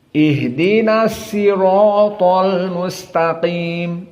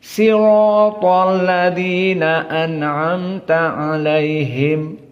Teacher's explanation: Dan di sana dari qiraah Ya'qub, dari riwayat Ruh an Ya'qub dan juga Ruwais, maka mereka tidak bisa membaca shad pada as-sirat, membacanya sin